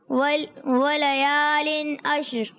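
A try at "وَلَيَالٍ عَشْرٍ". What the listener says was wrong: ماشاء اللہ، عین کی آواز عشر میں کلیئر کریں اور شین بھی ساکن ہو جائے، را بھی، عشر واللیل اذا ولیال عشر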